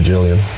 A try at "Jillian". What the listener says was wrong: Because it's like you don't pronounce the L, so it sounds like you're saying it like Million or billion. Like, not Jillian. Jillian.